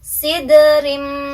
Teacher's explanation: ada tanwin kasrah di huruf ro ya ketemu sama mim jadi harus dimasukkan terus didengungkan juga ditahan dua ketukan ya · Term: Idgham Bighunnah